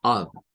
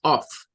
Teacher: no se pronuncia con letra F, ¿verdad? Sino que se pronuncia como con una letra V. Entonces tenemos que decirla como of, no es off.